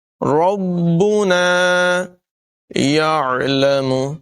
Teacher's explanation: ربنا یعلم، عین کی آواز نمایاں کریں گے، حلقے درمیان والے حصے سے عین ادا ہوگا۔ یعلم، یعلم، یعلم نہیں پڑھیں گے، اس طرح سے وہ حمزہ بن جائے گا اور معنی بدل جائے گا۔